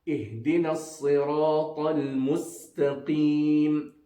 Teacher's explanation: Sin, again pronounced by the tip of the tongue, touching the edges of the central incisors, the two top teeth and the bottom teeth.